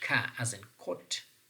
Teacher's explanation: ka as in kot is a kind of voiceless velar plosive. Voiceless means less vibration is actually perceived.